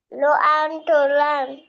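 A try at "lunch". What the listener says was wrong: ল আন ট না, ল আন চ, লান্স।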